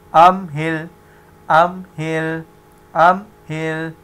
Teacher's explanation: نہ میم پہ قلقلہ ہوگا نہ لام پہ